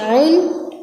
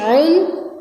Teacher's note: عین حلق سے نکلے گا، عین دو پیش عن، حمزہ دو پیش ان، عین دو پیش عن، حمزہ دو پیش ان، یہ حلق سے نکلے گا۔